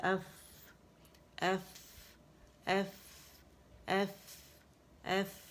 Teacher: جب آپ ایف بولیں گے تو اچھی خاصی جو ہمس ہے اس کا وہ واضح ہوگا، ہوا نکلتی بھی فیل ہوگی